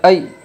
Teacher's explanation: یائلین کو نرم آواز کے ساتھ جلدی اور معروف پڑھے۔